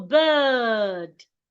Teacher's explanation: because of the R beside the I, the sound becomes longer.